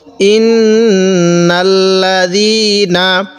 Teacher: আমরা জালটা একটু নরম করে পড়ব, যাতে করে এটা জিম না হয়ে যায়। হামজা খারা জবর এক আলিফ টান দিব এই খারা জবরের কারণে।